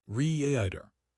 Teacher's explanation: The clue is actually in the vowel length. Before a voiced consonant like D in rider, the vowel is longer.